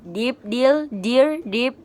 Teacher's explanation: Voice alveolar stop sound